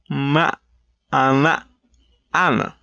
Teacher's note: a labiodental nasal, which is very similar to a bilabial nasal